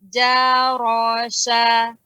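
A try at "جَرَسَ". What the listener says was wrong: Sa. Jarasa. Dia lebih tipis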